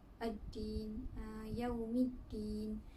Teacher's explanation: Seterusnya ad-din, hukumnya berlaku hukum alif lam syamsiah kerana huruf alif lam bertemu dengan huruf syamsiah iaitu dal. Perlu dibaca idgham iaitu memasukkan huruf dal.